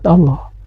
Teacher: Kalimat Allah ini harus dibaca tabhim, yaitu dibaca tebal. Karena kalimat Allah ini didahului oleh huruf yang berbaris domah. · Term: tafhim